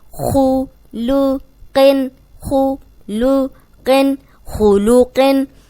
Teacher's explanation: اب خو موٹا ہے، قوف موٹا ہے، اور لام بیچ میں باریک ہے. اس لام کو ہم نے موٹا نہیں کرنا.